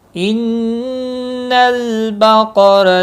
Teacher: نون مشدد پر غنہ ہوگا، لام ساکن کو ہلانا نہیں۔